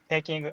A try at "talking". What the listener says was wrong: Careful with talking. You sounded like you said taking. You might have said taking. So I know that they look very similar, right? Talking and taking. Like they look close, but be careful when you read because, it's talking, not taking. Talking.